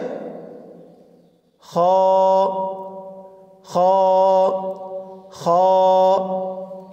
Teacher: খর মাখরাজ, কণ্ঠনালীর শেষ হইতে উচ্চারিত হয়, অর্থাৎ গলার শেষ ভাগ হইতে উচ্চারিত হয়